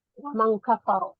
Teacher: Kafaro saat wasol dia juga dibaca tafkhim karena dia berharakat fathah, dan ketika dia diwakafkan ya menjadi kafar.